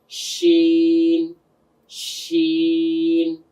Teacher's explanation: শিনের মাখরাজ কোনটা ছিল? জিহ্বার গোড়া তার বরাবর উপরের তালুর সঙ্গে লাগিয়ে 6 নাম্বার মাখরাজটা ছিল।